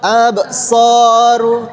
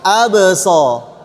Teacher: Bagian akhirnya jangan sampai ada hamzah.